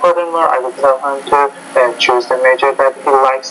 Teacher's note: You're kind of using the same tone on everything that you're saying